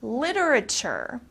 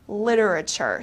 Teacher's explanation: in the united states we especially pronounce this t very softly the t becomes very soft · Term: soft t